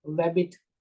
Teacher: a liquid consonant ra or La is replaced with gliding